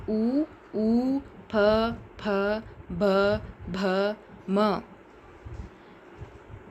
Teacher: ತುಟಿಯ ಸಹಾಯದಿಂದ ಉತ್ಪತ್ತಿಯಾಗುವ ವರ್ಣಗಳು ಓಷ್ಟ ವರ್ಣಗಳು